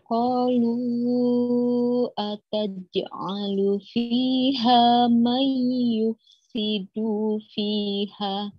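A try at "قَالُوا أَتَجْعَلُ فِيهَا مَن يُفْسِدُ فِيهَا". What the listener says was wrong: Dunya jangan panjang, Bu. Dunya jangan ikut panjang. May yufsidu fi, dufi jangan dufi, jangan gitu ya. Jangan panjang dalnya ya. Terseret betul. Jangan diseret, yo.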